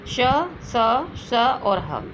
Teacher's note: इनके उच्चारण में वायु घर्षण के साथ निकलती है, इसलिए इसे ऊष्म व्यंजन कहलाते हैं।